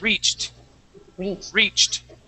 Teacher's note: that that e d makes a t sound